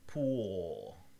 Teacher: And as a matter of fact, if you pronounce it yourself, you'll feel that the tip of your tongue is not touching your alveolar ridge. Pool. We call this a dark L, or a velarized L, and it has like this little curl in the middle. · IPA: [puːɫ]